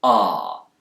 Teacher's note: British speakers especially those in the South of England will use a more back vowel sound here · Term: bath vowel